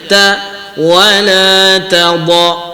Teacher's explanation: pada ayat wala tadau, ta nipis, dot tebal. Jadi kita kena bezakan kalau kita sebut wala tadau, kita seolah-olah kita nak tebalkan kedua-dua sebab dia dah kita nak terbawa kepada huruf dot itu.